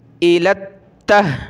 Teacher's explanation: تا کو سخت کریں گے تشدید کی وجہ سے